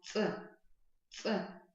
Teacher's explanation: То есть как бы вот резче и без придыхания